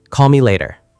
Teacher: The L flows into the M.